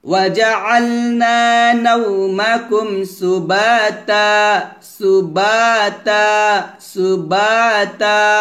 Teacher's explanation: নাও লিনের হরফ এখানে ঠোঁট গোল করে বলবেন, নুন ওয়াও জবর নাও টান হবে না। ওয়াজআলনা নাওমাকুম সুবাতা, সুবাতা, সুবাতা।